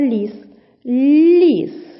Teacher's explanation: перший М'який приголосний потім голосний і останній твердий приголосний